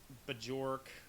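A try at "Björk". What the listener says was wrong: The J is silent, you racist nationalist prick.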